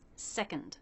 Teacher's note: We have the K consonant sound and the schwa N sound. So the N takes over the schwa. You don't need to worry about making it a separate sound.